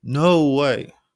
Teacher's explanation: Your voice rises over the word to show shock. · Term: upward pitch